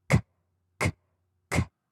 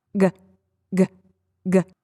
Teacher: The letter K and the letter G, same deal. Same thing is happening in the mouth, but K is unvoiced and G is voice.